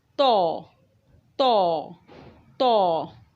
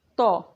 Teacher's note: तो भारी हुर्फ है और इसको मुंह खोल के मुंह के अंदर जगह बना के ज़बान को तालू से लगा के अदा किया जाएगा